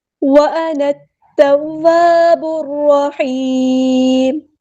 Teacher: عَلَيْهِمْ وَأَنَا التَّوَّابُ الرَّحِيمُ، نون کو ہم نے تا کے ساتھ ملا دینا ہے. حمزۃ الوصل ہمارا ڈراپ ہو جائے گا